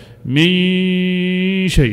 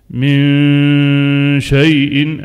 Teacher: الصوت كله من الأنف فقط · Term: الغنة